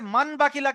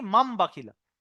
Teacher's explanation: ওখানে আছে মান বাকিলা, কিন্তু আপনার পড়তে হবে কি, মাম বাকিলা। নুন সাকিনের পরে বা আসার কারণে নুনটা মিম হয়ে যাবে, বদলে যাবে। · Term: ইকলাব